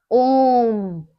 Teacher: जब ओम को हम उच्चारित करते हैं तो क्या बहुत देर तक खींचते हैं ना? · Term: प्लुत स्वर